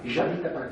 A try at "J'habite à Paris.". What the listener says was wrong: Nous allons encore déformer davantage vers le che, puisque ça ne suffit pas.